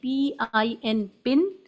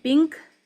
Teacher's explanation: تو نون ساؤنڈ جو ہے وہ انکلیئر ہو جاتی ہے یا صاف سنائی نہیں دیتی ہے ، کیونکہ زبان کی ٹپ اوپر کے ہارٹ پیلیٹ کو touch · نون sound of N جو ہے وہ ایک دم کلیئر ہے، زبان کی نوک کو ہارٹ پیلیٹ سے اوپر کے تالو سے ٹچ کرنے سے پن این ساؤنڈ کلیئر سنائی دیتی ہے